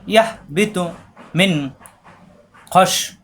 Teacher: মিন নুন সাকিনের পরে খ স্পষ্ট হবে, মিন গুন্না হবে না।